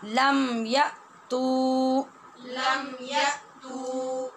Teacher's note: या के बाद हमज़ा है, वहाँ झटके से आवाज़ सख्ती से बंद हो जाएगी, और ता के बाद पेश है, ता के ऊपर, और उसके बाद वाव है साकिन।